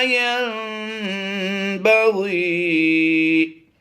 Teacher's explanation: نون ساکن کے بعد اگر حرف با آ جائے تو نون کی آواز کو میم سے بدل کر اقلاب کرتے ہیں، اسی کا نام اقلاب ہے۔